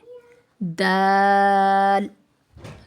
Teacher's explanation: زبان کی نوک ثنایا علیہ کی جڑ سے لگے تو اس وقت دال ادا ہوتا ہے